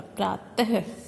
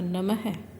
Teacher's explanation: मात्रा के रूप में इसमें दो बिंदु के चिन्ह का प्रयोग किया जाता है और इसकी ध्वनि होती है ह। इन्हें बोलते समय ह की ध्वनि निकलती है, हल्का सा ह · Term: विसर्ग